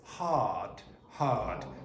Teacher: So you take out the R and then you make the vowel sound before the R longer. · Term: non-rhotic